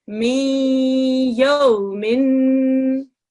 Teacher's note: you have to say the noon sound, but you can't say it as a proper noon sound. You have to do it only half. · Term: idgham naqis